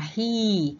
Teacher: ketika kita mengucapkan kata hi, itu lidah kita bagian depan yang terangkat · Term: front vowel